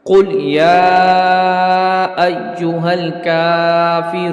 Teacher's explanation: کاف پر کھڑی حرکت ہے، اس لیے اس کو ایک الف یعنی 2 حرکات کے برابر کھینچ کر پڑھیں گے